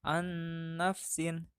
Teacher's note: nun mati dibaca lebur menghadapi huruf idgham yaitu nun